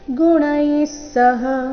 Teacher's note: ಗುಣೈ ಆದ ನಂತರ ವಿಸರ್ಗ ಉಚ್ಚಾರಣೆ ಸ ರೀತಿ ಮುಂದಿನ ಸಹ ಒಟ್ಟಿಗೆ ಗುಣೈಸಹ ಸರ್ವತಾ ಥ ಇಲ್ಲಿ ಮಹಾಪ್ರಾಣ ದೀರ್ಘ ತ ಬೇಡ